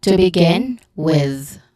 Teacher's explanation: In the with, you use the voice th version